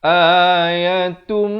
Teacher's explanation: Di sini idgham bi gunnah. Asalnya ta tanwin di depan bunyi tun. Tapi bila datang mim terus masuk beserta dengung.